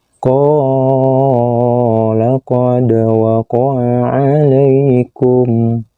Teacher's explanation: Yang ditunjuk dengan anak panah yang berwarna biru, ini adalah huruf dal yang berbaris sukun, yang harus dipantulkan membacanya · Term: qalqalah sugro